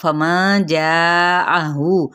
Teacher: जा पे 4 हरका लंबा करेंगे